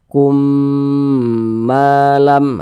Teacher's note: Kumnya itu kita tahan, kita panjangkan sejenak karena dia didengungkan. · Huruf mim sukun berjumpa dengan huruf mim atau huruf mim sukun setelahnya huruf mim, maka hukumnya idgham mimi, maka dibaca berdengung. Jadi suaranya itu kita tahan, kita panjangkan sejenak.